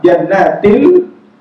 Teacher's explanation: tanwin bertemu dengan la, walaupun idgham juga hilang bunyi nun, masuk seluruhnya la. Jannatil, tapi bila gunnah, tapi tak ada dengung.